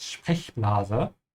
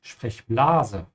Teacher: So you have to stretch the E and not the A.